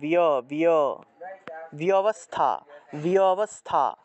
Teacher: ব্যবস্থা, বয়ের সাথে জফলা আছে, বয়ের সাথে জফলা থাকায় আমরা বিয় উচ্চারণ করব, বিয় বিয়, বিয়বস্থা, বিয়বস্থা, এইভাবে উচ্চারণটা করতে হবে। অর্থাৎ জফলা থাকায় ই এবং অ উচ্চারণ করতে হবে, ইয় উচ্চারণ করতে হবে জফলা থাকলে।